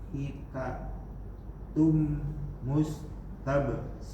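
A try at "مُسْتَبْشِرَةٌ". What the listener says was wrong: Nggak usah dipanjangin, ini nggak panjang. Mustabsyirah.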